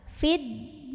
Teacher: Maka alif lam ini tidak perlu dibaca, dari fi langsung masukkan ke dal. Fiddin. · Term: alif lam syamsiyah